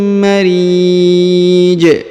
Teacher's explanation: Sehingga kemudian kita pantulkan atau kita qalqalahkan. Karena huruf ja disukunkan ya, dan apabila sukun maka dipantulkan atau diqalqalahkan.